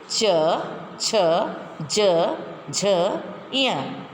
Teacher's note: च वर्ग में तालु से बोला जाता है